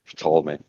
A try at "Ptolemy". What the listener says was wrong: Ptolemy, you just miss out the P. Silent P.